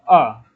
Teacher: आपकी जो आवाज है अ बोलने में वो जीभ की क्या आ रही है मध्य से आ रही है इसीलिए हम क्या कहते हैं इसको मध्य स्वर भी कहते हैं